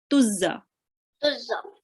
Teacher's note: make sure not to make the za too long, okay? Only 1 count.